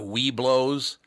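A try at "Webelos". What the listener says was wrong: I think they put an extra syllable between we and blow, so it's Weebelos or something like that.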